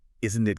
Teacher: falling intonation. So it's not isn't it going up high? It's isn't it going down? >> Yes. It is a subtle invitation for the other person to share a moment of consensus with you. · A tag question with a falling intonation, where your voice drops slightly at the end, isn't it, is not a request for information.